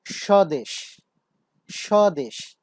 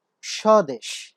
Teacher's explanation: এই বফলা থাকার কারণে প্রথম বর্ণটি বা প্রথম ধ্বনিটিতে কিন্তু একটু ঝোঁক পড়েছে, স্ট্রেস পড়েছে, যেটাকে আমরা বলছি শ্বাসাঘাত।